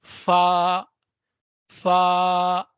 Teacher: ऊपर के दांतों के किनारे और निचले होठों के तर हिस्से से जो हंठ का हिस्सा है उसमें से निकलती है। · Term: हरूफ शफविया